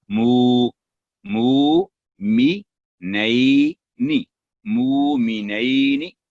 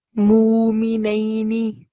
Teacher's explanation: واو پر جزم جھٹکا نہیں لگاتی بلکہ آواز کو لمبی کرتی نرمی کے ساتھ